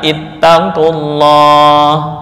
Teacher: Ittaqullah, nggak boleh dibaca ittaqullah karena lam didahului oleh dhammah, maka lam pada lafal Allah dibaca dengan tafkhim atau tebal